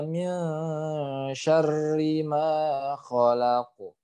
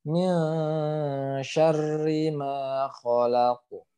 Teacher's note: Ya nun sukun ketemu huruf shin tadi ditahan dan di sini yang harus diperhatikan adalah huruf qaf yang sukun karena waqaf dia dipantulkan. Jadi bacanya min syarri ma khalaq. Seperti itu ya. Min syarri ma khalaq. Pantulannya ke huruf O